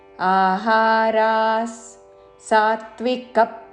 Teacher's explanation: ఆహారాస్, మూడు దీర్ఘాక్షరములు విసర్గ ఉచ్చారణ స.